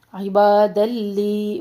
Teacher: تنوین کو ہم لام میں مرج کریں ادغام بلا غنہ